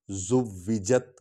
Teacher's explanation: وا پر سٹیس کیا، زور آیا ہے